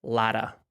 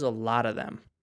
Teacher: What tends to happen is we get rid of the F on this word of.